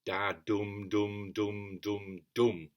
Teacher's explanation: If you look down below where I printed it out, there's what they call a caesura, represented by a comma after that. So there's kind of emphasis on that sixth syllable, the fifth long syllable.